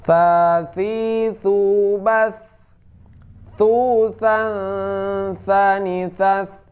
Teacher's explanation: Nah, kalau tha ini hamas, keluar angin.